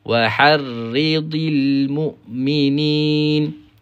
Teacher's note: Ri tu tebal. Ra kena nipis. Sebab apa? Sebab baris bawah.